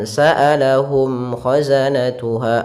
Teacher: Kemudian pada lafal mim mati, di sini ada bacaan izhar syafawi, yaitu suara mimnya harus dibaca dengan jelas, tidak boleh ditahan.